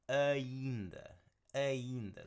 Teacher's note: Okay, and that D there with most D's in Portuguese, they're not like these strong, like hard d. It's more of a almost like a TH sound to it.